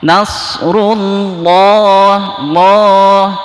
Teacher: Tafhim, ya, artinya tafhim itu tebal, maka ditebalkan Allahnya